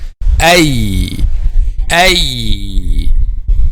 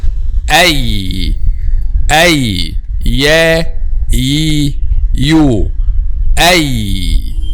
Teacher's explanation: The middle part of the tongue touches what lies opposite, which is the roof of the mouth. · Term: letter Ya